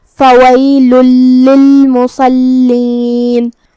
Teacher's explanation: ہم یہ تنوین کو لام میں داخل کر کے تشدید کے ساتھ لیکن بغیر غنہ کی حکم کو ادا کریں گے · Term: ادغام